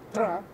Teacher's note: en una parte de Ancash, todavía se utiliza el sonido retroflejo , tra, que ya no se utiliza en otros lugares. De